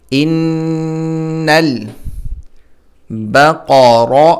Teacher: قاف موٹا ہوگا، را زبر را، را بھی موٹا ہوگا